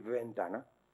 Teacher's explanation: ya no dice nadie ventana con la V fricativa de Castilla-La Mancha en Valladolid